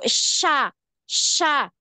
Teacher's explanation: Makhrajnya tadi keluarnya di tengah lidah. Suara itu keluarnya di tengah lidah itu. Dan fathahnya ya, a itu juga keluarnya di situ.